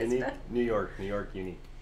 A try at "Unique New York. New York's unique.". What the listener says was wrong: You had to do the S. Unique New York. New York's unique.